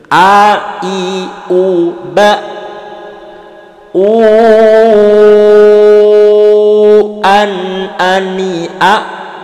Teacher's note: Hamzah makhrajnya ada di tenggorokan paling bawah.